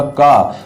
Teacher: और हकार जैसी आवाज आती है, जैसे मान लो अगर मैं यहाँ पर पढ़ूंगा का, तो का में हकार जैसी आवाज नहीं है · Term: अल्प प्राण